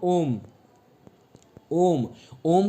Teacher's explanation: प्लुत स्वर ऐसा होता है उसमें दोस्तों 3 मात्राओं का समय लगता है।